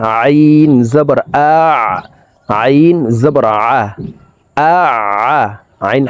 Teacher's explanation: আইন হরফকে হল মধ্যখান থেকে চাপ দিয়ে উচ্চারণ করতে হবে।